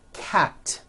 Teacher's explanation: Cat ends with an unvoiced t.